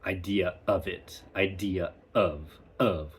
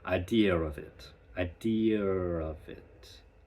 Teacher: you stick that R in there because it's kind of like a springboard. The intrusive R is kind of like a springboard to take your vowel hit hit it with an R go back to a vowel instead of what we do in America which is we kind of we break it up.